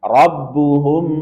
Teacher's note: ada ghunah dengung kemudian perhatikan bibir dirapatkan tanpa ada penekanan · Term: Ikhfa Syafawi